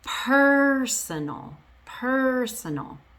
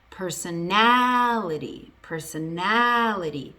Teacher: So what happens is the stress moves from the first syllable all the way to the second to last syllable · I went from having the stress on the first syllable, personal, to having the stress all the way on the second to last syllable